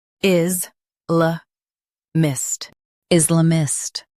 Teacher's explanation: Stress is and keep la mist soft.